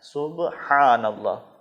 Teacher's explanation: تو اس کے جو ابتدائی 2 اذکار ہیں، سبحان اللہ، اس میں ایک حرف ہے ہا، سبحان اللہ، ہا وہی جو حلوے والی ہا حلق کے درمیان سے ادا ہوگی، سبحانہ نہیں پڑھنا ہے گول ہا کی طرح، بلکہ حلق سے پڑھنا ہے، حلق کے درمیانی حصے سے پڑھنا ہے، سبحان اللہ۔